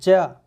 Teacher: आपकी जबान का अगला भाग है वो ऊपर कठोर तालु को स्पर्श कर रहा है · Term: तालव्य व्यंजन